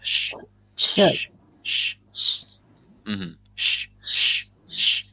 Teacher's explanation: So with sh, sh, as if you're trying to make someone be quiet, that is just pushing the air through the gap between our teeth and our tongue.